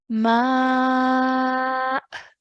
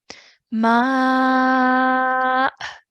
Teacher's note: there's a slight soft jerk at the end for the hamza sakin